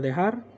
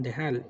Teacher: a veces la R se pronuncia como L al final de la palabra.